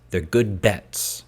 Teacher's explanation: Make sure bilabial. These are lips coming together.